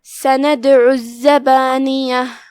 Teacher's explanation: زائی پہ تشدید ہے تو اس کا دھیان رہے، ہم 2 حرف کی مقدار میں زائی کو پڑھیں گے. آخری میں تا مدورہ کا دھیان رہے، ہم اس پہ ہا سے رکیں گے.